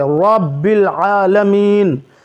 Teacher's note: را جب کہیں گے تو منہ گول ہوگا، موٹا پڑھیں گے